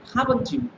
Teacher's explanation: when I say haven't you, so my tone is going up. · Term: intonation